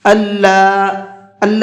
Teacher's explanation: اللہ کے نام کو تھوڑا سا یعنی 1 الف کے برابر کھینچ کر کے پڑھیں گے۔